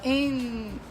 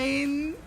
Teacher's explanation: A língua vai estar lá atrás dos dentes e apoiadazinha no céu da boca.